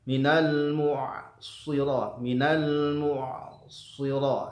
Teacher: ainnya tipis ya, shadnya tebal ya, walaupun tidak tebal ketika dia fathah ya. Ya, dia lebih tipis ya, tingkat maratib tafkhimnya itu lebih tipis ketika dibandingkan dengan diharokati dengan harokat dhammah dan fathah.